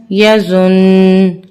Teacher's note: वफ की सूरत में भी आखिर में कुन्ना बाकी रहेगा